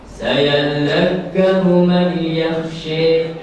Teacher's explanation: Tidak dibaca idgham bigunnah, dia hanya dibaca idgham saja.